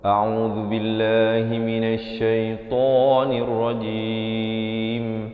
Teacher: hamzah a di pangkal kerongkong, ain di pertengahan kerongkong, zu di hujung lidah